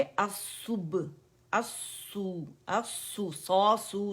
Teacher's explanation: जहाँ पे दम्मा है वहाँ पे लिप्स की रोलिंग होगी, क्योंकि हमने दम्मा जाहिर करना है कि इस लेटर पे दम्मा है, तो इसे गुलाई से अदा करेंगे।